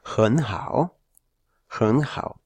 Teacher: Si vamos de derecha a izquierda, tenemos estas dos frases, estas dos sílabas, que habría que cambiar de este modo. Un tercero más un tercero pasa a ser un segundo más un tercero, con lo cual esto se pronunciaría como hen hao, hen hao.